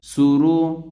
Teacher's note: سین پیش سو، را پیش رو، را پر پیش ہے اس لیے اس را کو بھی موٹا پڑھا جائے گا۔ سورو، را دو پیش رن، اور 2 پیش والے را کو بھی پر پڑھا جائے گا، موٹا پڑھا جائے گا۔